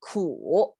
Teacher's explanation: I make this symbol to mean it's you have to pronounce it with a downturn and upturn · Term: third sound